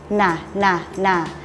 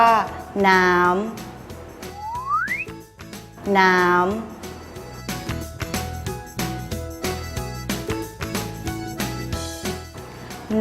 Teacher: ให้ใช้ปลายลิ้นแตะบริเวณฐานฟันบนพร้อมทั้งทำเสียงขึ้นจมูก